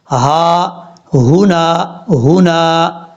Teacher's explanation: یہاں پر دو ہا ہیں، دونوں بھاری ساؤنڈ کے ساتھ پڑھے جائیں گے. ان کا تعلق سینے کے ساتھ ہے، سینے سے آواز آئے گی.